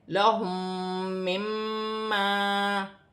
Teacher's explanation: الف مدہ بھی ہے، ایک الف کی مقدار کھینچ کر پڑھا جائے گا